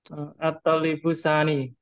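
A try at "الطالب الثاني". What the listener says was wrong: Sani? La, laisa sani. Man yadrusu fi kulliyati tibbi at-talibus tsani? At-talibus tsani? Idan yadrusu fi kulliyati tibbi at-talibu as-tsani.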